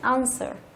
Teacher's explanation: trọng âm của nó rơi vào âm thứ nhất